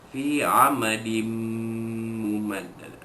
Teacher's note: bunyi tanwin itu dimasukkan ke dalam huruf mim itu dengan dengung. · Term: idgham ma'al gunnah